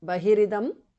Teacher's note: Bahihi visarga changes to repha. Idam bahiridam because of sandhi.